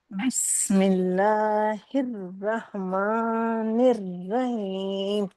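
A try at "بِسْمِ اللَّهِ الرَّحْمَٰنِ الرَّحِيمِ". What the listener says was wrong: بیٹا آپ جھٹکا دے رہی ہیں. بسم اللہ الرحمن الرحیم. جھٹکا ہاں پھر سے پڑھیے، جھٹکا نہیں دینا ہے.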